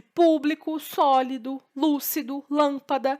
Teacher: essa sílaba com mais força ela é uma palavra paroxítona e proparoxítona e quando a antepenúltima sílaba é a mais forte